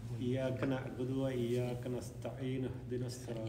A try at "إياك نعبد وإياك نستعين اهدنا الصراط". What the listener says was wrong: You're not making the dhamma. The lips should come out when you say the dhamma.